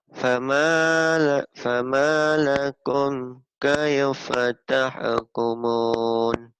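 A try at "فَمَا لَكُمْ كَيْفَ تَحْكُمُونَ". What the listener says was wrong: Tuh gitu. Itu masih bagus ya.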